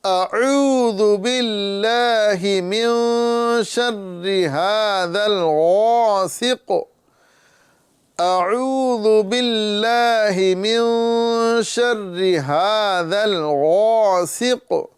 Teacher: حمزہ کی آواز نیچے والی حلق سے اور عین کی آواز ہمیں درمیان والی حلق سے یہ ادا کرنا ہے